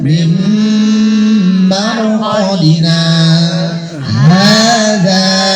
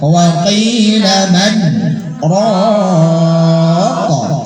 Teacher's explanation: bacaan saktah berhenti sejenak dua harokat tanpa bernapas